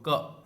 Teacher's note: अ छिपा हुआ है। क बोलते हो तो अ की ध्वनि निकलती है